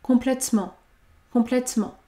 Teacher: Le E de complètement n'est pas prononcé puisqu'il y a une seule consonne devant.